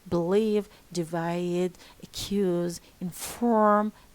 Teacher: we stress the second syllable in verbs